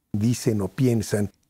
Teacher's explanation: La n de dicen se ha unido con o y por eso parece que está diciendo no.